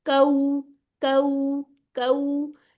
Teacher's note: वाव पे होंठ गोल होंगे, कऊ कऊ कऊ, ठीक है। गोल रोलिंग होनी चाहिए। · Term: वाउलिन